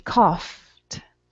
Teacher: it ends with an F sound, so I'm going to pronounce a T at the end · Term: T sound